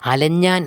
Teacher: എന്നുള്ള ഇഞ്ച കടന്നു വരുന്നു എന്നാൽ ഇതിനുശേഷം നമ്മൾ നേരത്തെ സൂചിപ്പിച്ച അനുനാസികാദിപ്രസരം ഇവിടെ ഇഞ്ച എന്നുള്ളത് മാറി അനുനാസികമായിട്ടുള്ള ഞ വരുന്നതുകൊണ്ട് അലഞ്ഞാൻ എന്നാവുകയാണ് ചെയ്യുന്നത്